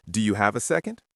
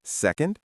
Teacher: Notice how the word second goes up at the end.